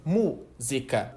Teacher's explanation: a gente entende que música, só de ouvir, tem uma sílaba tônica no MU